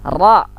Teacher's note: Ro, lidah melengkung ke langit-langit.